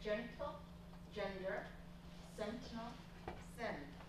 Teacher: We have the place of articulation for the nasal matching the place of articulation for the stop consonants.